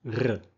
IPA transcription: ʀ